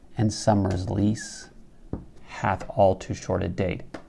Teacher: you can hear the pause it's after lease